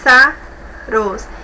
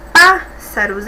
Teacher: pássaros é a antepenúltima, que é a mais forte